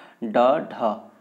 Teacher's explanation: ठीक है, मतलब जीभ के जीभ के छत का अगला भाग टच हो रहा है, ठीक है, उसके सहारे हम बोल रहे हैं ड ढ। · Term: मूर्धन्य व्यंजन